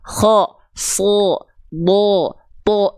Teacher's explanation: Niat saya itu tadi A loh, tapi karena nangkring pangkal lidah jadilah vokal seperti O. Faham? Kalau pangkal lidahnya turun, huruf-huruf tebal nggak akan terdengar O. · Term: pangkal lidah naik